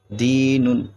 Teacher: حرف مدہ کو ایک الف یعنی دو حرکات کے برابر کھینچ کر پڑھیں گے